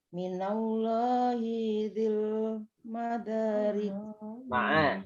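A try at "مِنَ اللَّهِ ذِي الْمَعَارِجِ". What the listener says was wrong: Hinya jangan diseret. Hinya 1. Minallahi dzil ma'arij. Nah, jangan minallahi dzi. Dzi itu mat tabi'i. Hinya pendek. Minallahi dzil. Langsung ya. Minallahi dzil.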